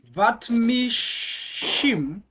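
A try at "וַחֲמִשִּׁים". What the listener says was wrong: That's a chet. Achamishim. Vachamishim.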